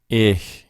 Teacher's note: it's like the beginning of the word huge, with air whooshing over the top of your tongue. Yes. Maybe think of I read somewhere, think of a cat hissing, making a hissing sound.